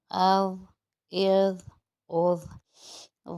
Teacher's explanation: ضا جو ہے وہ حروف مستعلیہ میں بھی آتا ہے، اس لیے اس کی ادائیگی موٹی بھی ہوگی۔